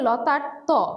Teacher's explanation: ত টাই হচ্ছে অঘোষ ধ্বনি এবং এটা একটা অল্পপ্রাণ ধ্বনি